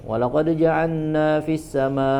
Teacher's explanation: memasukkan huruf lam Ya seperti yang tadi walq jaalna ya jaalna karena saking cepatnya tidak jelas seperti memasukkan huruf lam ke huruf nun